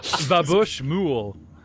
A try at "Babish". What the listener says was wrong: That's Babish. That's an E, not an O.